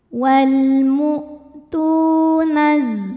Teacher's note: ada wau sukun yang didahului baris damah maka huruf Ta ini kita panjangkan dua harakat